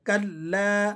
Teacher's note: तो काफ को आप जब लाम के साथ जॉइंट करेंगे तो इसे जरा जमाव के साथ और सख्ती के साथ आपने पढ़ना है